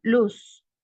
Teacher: La lengua toca el alveolar y el aire pasa por los dos lados. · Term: laterales